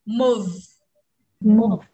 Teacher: nó chỉ có chút dư âm của chữ vừ ở cuối một tí thôi